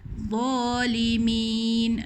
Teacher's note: Hujung lidah di antara dua gigi tapi dia tebal dha. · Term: makhraj dha